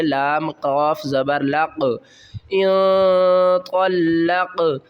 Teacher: زیر قوا کو لام سے ملانا قوا لام زبر طل آگے لام کو قاف سے ملانا ہے قاف ساکن ہے یہاں پر قلقلہ کریں گے